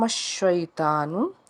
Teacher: شین جو ہے حرف شجریہ ہے، آواز منہ میں پھیلے گی۔ شین یا زبر شئی ہے، یعنی کہ یا لین کا قاعدہ ہے، معروف طریقے سے اس کو پڑھیں گے شئی۔